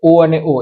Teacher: અને કંઠોષ્ઠ્ય સ્વર, તો ઓ અને ઓ એ કંઠ અને હોઠ બંનેનો ઉપયોગ કરીને આપણે બોલીએ છીએ. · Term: કંઠોષ સ્વર